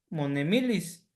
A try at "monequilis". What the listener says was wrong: ahí donde dice, dice usted monemilis, pero ahí está escrito monequilis, donde dice Shinesh Napalo Nikneki Nikmatis monequilis.